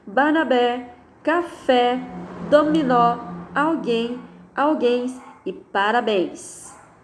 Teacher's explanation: então de trás para frente é a última sílaba tônica é mais forte · São palavras cujas sílabas tônicas são acentuadas na última sílaba. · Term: oxítonas